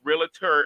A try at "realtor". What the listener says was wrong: You don't. You say realtor and it's realtor. No, you're saying realtor. You're putting emphasis on the A. You don't need to. It's just realtor. When you say real, you don't say real. You say real. It's the same thing.